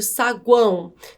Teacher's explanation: pela consoante g semivogal u vogal a e semivogal o essa esse o está fazendo papel de semivogal por quê porque tem som de u · os tritongos nasais durante a pronúncia o ar passa pela boca e pelo nariz